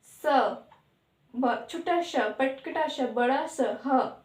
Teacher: ये जब बोलते हैं तो थोड़ा रगड़ के साथ और ध्वनि बाहर आती है, गरम जिसे बोलते हैं, मतलब रगड़ के साथ ऊष्म ध्वनि उत्पन्न होती है, गरम ध्वनि उत्पन्न होती है। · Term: ऊष्म व्यंजन